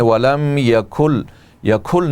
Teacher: آپ کاف کے اندر ہا کی آواز پیدا کرتے ہیں. وَلَمْ يَكُلْ یکھل نہیں ہے بلکہ اس کاف کو اس کے اندر شدت ہے.